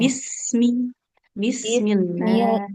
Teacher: Jadi baknya jangan panjang